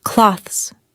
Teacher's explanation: >> Many learners add an extra syllable, like clo-thes. Instead, native speakers usually say clothes. It's quick and ends with a z sound.